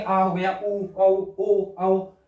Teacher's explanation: जीवा पीछे की तरफ रहेगी, इन स्वरों के उच्चारण में जीवा मुंह के पीछे वाले भाग में रहती है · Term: पश्च स्वर